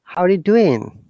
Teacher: generally we do not pronounce the g we pronounce only i n